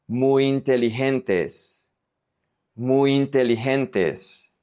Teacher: we have the Y that here sounds like a vowel. And then, we have the I, so they are going to connect.